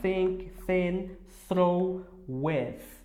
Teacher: Tem gente que coloca a língua no céu da boca, eu já coloco mais entre os dentes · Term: o som do TH